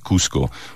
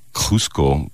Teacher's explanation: Whereas in Peru, this word would come out much more like Cusco, a much more glottal sound to it